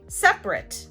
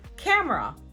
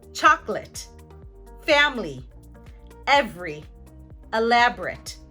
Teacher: oftentimes native speakers may remove the schwa. This is called syncope.